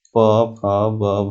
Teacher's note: प वर्ग और उपधमानीय वर्ण का उच्चारण स्थान ओष्ठ होता है